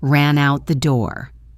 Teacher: The N at the end of ran connects to the ow in out, creating ran out.